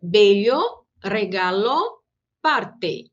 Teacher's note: o som do E sempre equivale ao som do E fechado